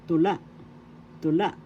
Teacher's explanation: The accent is in second syllable la.